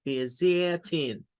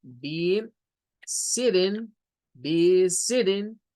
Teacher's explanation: People in the United States use maybe the sound for that T like a D, or maybe like an R. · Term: flap T